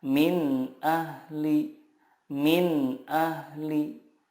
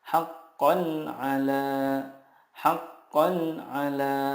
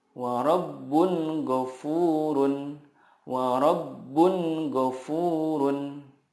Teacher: huruf-huruf izhar di sini makhrajnya adalah dari tenggorokan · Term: izhar halki